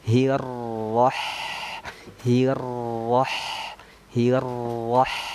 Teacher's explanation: ketika huruf H-nya itu sukun, kita senyumkan karena dia tipis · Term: sifat istifal